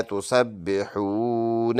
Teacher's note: stop کریں گے تو نون کا زبر سائلنٹ کر لیں گے تسبحون بن جائے گا